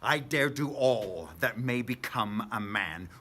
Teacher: adding the sort of stresses to every second syllable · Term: iambic pentameter